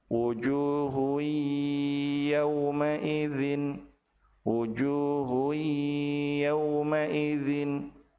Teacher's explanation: Apabila tanwin bertemu dengan ya, maka tanwin dilebur ke huruf ya dan ditahan dua harokat disertai dengan gunnah.